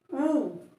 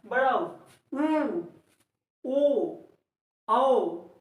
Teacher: इसको जब आप बोलेंगे ऊ, तो ओठ आपका एकदम गोला हो जा रहा है। · देखिए लास्ट में आपका ओठ एकदम गोला हो जा रहा है, इसलिए इसको वृत्तमुखी। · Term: वृत्तमुखी स्वर